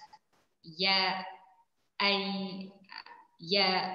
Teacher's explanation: Huruf ya keluar dari pertengahan lidah bertemu dengan pertengahan langit atas. Ya, ya, pertengahan lidah bertemu dengan pertengahan langit.